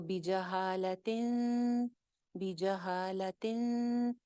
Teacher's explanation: نہیں ہے، تو کیا ہوگا یہاں پہ، اخفا ہو جائے گا، اگین نون کو چھپائیں گے